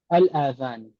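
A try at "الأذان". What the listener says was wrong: आजान नहीं, देखिए आजान जो मत के साथ आप बोल रहे हैं ना, आजान, जी वो दूसरे माने में आता, वो कान के माने में आता। उजुन की जमा आजान है, उजुन की जमा है ये।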